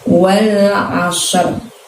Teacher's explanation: Nah, di situ cara mengucapkannya, walnya pendek, ashrnya itu karena pakai ain, tidak usah banyak bergerak mulutnya, kita keluarkan dari tenggorokan kita